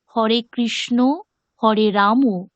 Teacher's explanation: বাংলা ভাষাতে শব্দের শেষে অ এর উচ্চারণ আমরা ওকারের মত করে থাকি সংস্কৃত ভাষায় এটি ভুল উচ্চারণ।